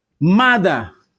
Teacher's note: This ER takes the schwa.